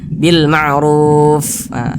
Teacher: mengucapkannya ahah Bil Ma'ruf ahah kita berwakaf tepat di huruf Fa jadi ketika mengucapkan huruf Fanya itu ada nafas yang mengalir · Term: sifat hams